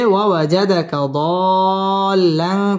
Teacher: ওয়াজাদাকা দাল্লান চার আলিফ টান দিয়ে পড়তে হবে